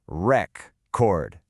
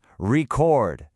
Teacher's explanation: Let's take the word record. When it's a noun, like a vinyl record, we stress the first syllable. Record. That e is a full e sound. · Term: word stress